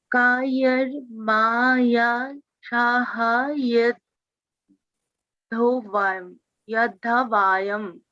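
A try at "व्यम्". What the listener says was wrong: Yod, not vayam, vyam. Why is it vayam? Vyam, right? You have been pronouncing it as vyam all the time that we did today. So when you're combining it, it doesn't change, right? All that we're doing is that, the breaking is still there.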